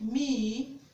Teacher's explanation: the lips are spread to pronounce the vowel e